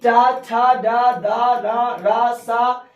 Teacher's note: ये मूर्धन्य है, ये मूर्धन्य से बोले जाते हैं